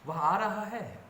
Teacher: अब इस सेंटेंस को मंद स्वर में पढ़ेंगे तो सामान्य कथन, सम स्वर में पढ़ेंगे तो प्रश्नवाचक वाक्य हो जाएंगे, और उच्च स्वर में पढ़ेंगे तो आश्चर्य सूचक हो जाएंगे